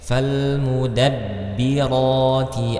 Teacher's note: huruf ba ini memiliki sifat syiddah kuat